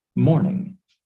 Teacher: When a word in English has two or more syllables, we stress one of the syllables more than the others. Morning has stress on the first syllable.